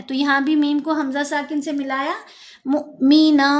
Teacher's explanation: मूमिनन नहीं पढ़ना, ये वाव मद्दा नहीं है, ये हमज़ा साकिन है। तो यहाँ भी मीम को हमज़ा साकिन से मिलाया।